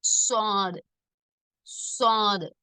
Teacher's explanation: நுனி நாவுடைய மேல் பகுதி மேல் கீழ் பற்களுடைய நடுவில் வைத்து மேல் கீழ் பற்களின் நடுவில் வைத்து காற்றை அழுத்தமாக வெளியிடும் போது உண்டாகிறது